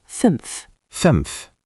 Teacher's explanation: The ü is rounded, like you're whistling a little